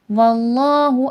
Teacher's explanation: اللہ لفظ سے پہلے زبر ہے، موٹا کر کے پڑھا جائے گا